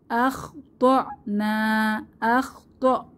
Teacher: হামজা এর উপরে সাকিন এসেছে তাহলে একটু ধাক্কা দিয়ে পড়বো আখ নাতে এক আলিফ টেনে জবরের বাম পাশে খালি আলিফ এক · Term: সিফাতে সাদিদা